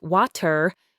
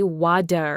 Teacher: a British speaker might articulate water with a very distinct and pronounced t almost a crisp pop whereas an American speaker would almost instinctively say wad with that softened d sound making it sound much smoother and quicker. Meticulously listening for this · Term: T-shift